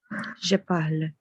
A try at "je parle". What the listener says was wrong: Très bien, c'est ça.